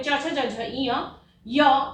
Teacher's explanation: ई, बड़ी ई यानी दीर्घ ई, च वर्ग, य एवं श, इन वर्णों के उच्चारण में तालु की आवश्यकता होती है, इसीलिए इन्हें तालव्य वर्ण कहा जाता है।